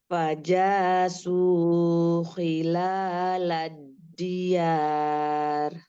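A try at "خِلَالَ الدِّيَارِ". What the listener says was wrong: Khilalad diyar. Kalau yar itu pendek apa tipis, maunya ditebalkan. Khilalad diyar.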